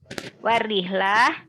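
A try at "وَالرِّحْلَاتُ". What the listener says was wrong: Ya, sebetulnya untuk kata rihlat ini bukan rihlah ya. Dia itu taknya tak terbuka. bacanya warihlat, warihlat, tak ya.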